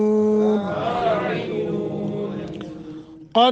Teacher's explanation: قاف کو موٹا دال پہ قلقلہ کرنا ہے. قد افلح المؤمنون جھٹکے کے ساتھ پڑھیں گے، حمزہ ساکن ہے.